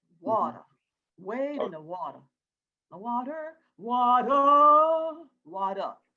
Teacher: Now, water, R's don't exist too much.